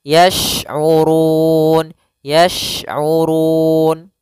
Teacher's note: ada huruf syin hati-hati jangan terbaca dengan huruf Sin ya syin makhrajnya adalah tengah lidah kita